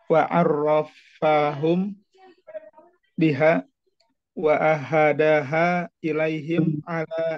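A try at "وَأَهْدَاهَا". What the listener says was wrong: ahdaha af'ala. Jadi bukan wa'aha, tapi ah. Sukun haknya.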